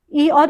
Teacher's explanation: मुख के भीतरी जो मुख के अंदर का भीतरी भीतर की ऊपरी छत का जो पिछला भाग होता है उसको तालु कहते हैं। इ और इ के उच्चारण में जीभ तालु के करीब आ जाती है। अतः ये तालव्य ध्वनि है।